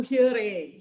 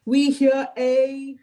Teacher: Separate. So a little glottal stop. Yeah, it's very gentle.